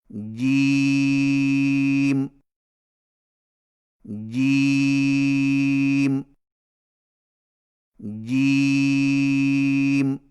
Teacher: جیم کی ادائیگی میں زبان کے درمیان کو تالو کے ساتھ سختی سے لگا کر باریک آواز میں پڑھیں، یعنی جیم جیم جیم۔